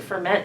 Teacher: ferment sounds better to me put your accent on the second